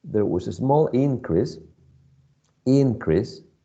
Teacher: So I would say that it's the first syllable, the one that is stressed.